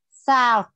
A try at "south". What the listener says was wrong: A TH, T nhẹ hơn, south.